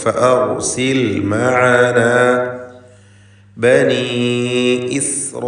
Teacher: റായിനെ തഫ്ഖീം ചെയ്യണം, തടിപ്പിക്കണം.